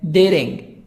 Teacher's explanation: dating, T, soft D, D, between A and I, between two vowels.